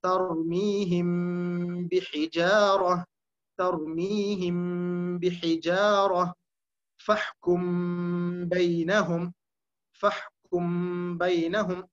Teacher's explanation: ஆனால் இந்த இடத்தில் மீம் பூர்த்தியாக மறைவதில்லை. மாறாக மீமுக்காக நாம் மூடிய வாயை அப்படியே வைத்துக் கொண்டு அந்த பாவை மொழிகிறோம். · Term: இஹ்ஃபா